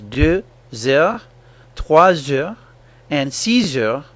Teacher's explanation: Pay careful attention to the Z sound that happens between words such as 2 heures, 3 heures, and 6 heures. In French, this Z sound is called liaison, which is a French word for link or connection.